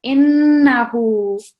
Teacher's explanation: the noon mushaddad, a lot more emphasis and a slight nasal sound as well when you're pronouncing innahu. Okay, a lot more emphasis on the noon.